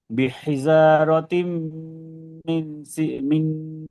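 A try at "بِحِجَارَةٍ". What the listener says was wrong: বিহিজা, যা জিমটা জিমটা শক্ত হবে, হ্যাঁ, বিহিজা, বিহিজারাতিম মিন সিজ্জিল।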